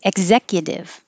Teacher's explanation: I hold my tongue in the K position. Executive, the T changes to a D.